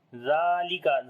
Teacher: Zal we long due to standing fatha on it. Kaf we read in light sound.